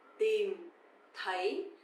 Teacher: But the second one, TH, sounds like the, a bit softer, right? So tìm is dấu huyền, you have to go down, and thấy, dấu sắc, you have to go up